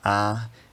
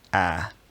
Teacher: just a straight long low front vowel a, and having a slightly higher quality like a